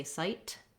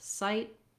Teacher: So it's called a stopped T. I might not say sight with a burst of air, but rather just sight. I lift the tongue and I don't let anything out.